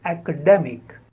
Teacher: The first is a as in action, apple, and the second syllable is de, a. So academic, and the stress is on the second syllable